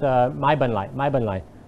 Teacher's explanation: many Thai people are changing the R with the L sound in their kind of common speech. So this sound is kind of becoming this for people who are speaking fast and what my wife calls like lazy Thai.